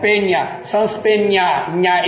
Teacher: Esse nha espanhol é o N palatal, nha. E aí você tem o N no céu da boca, que é o N do caipira, perna.